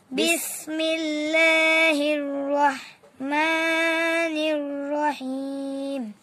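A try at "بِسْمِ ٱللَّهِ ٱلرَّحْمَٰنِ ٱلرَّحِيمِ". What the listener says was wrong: হার উচ্চারণটা ঠিক না। বিসমিল্লাহির রহমানির রহিম। এটা বলো।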